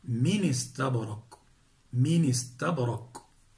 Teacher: كسرنا النون الساكنة لأنها تحركت بحركة الهمز بعد النقل، نقلنا الكسرة التي هي حركة الهمز إلى الساكن قبلها وحركناه بحركة الهمز بعد حذف الهمز فتصير من استبرق، من استبرق.